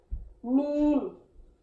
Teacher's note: میم جو ہے یہ ہونٹوں کے جو دوسرے خشک حصوں سے اس کا مخرج نکلتا ہے